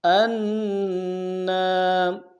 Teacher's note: حمزہ کو نون کے سامنے لائیں گے، نون کے اوپر تشدید زور دیں گے اور نون کے ساتھ الف مدہ ایک اعتدال میں کھینچیں گے